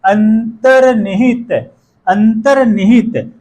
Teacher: रे का उच्चारण न ध्वनि के पहले हो रहा है